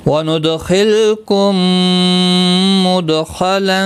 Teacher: میم ساکن کے بعد دوسرا میم مشدد آیا ہے، ادغام شفوی ہوگا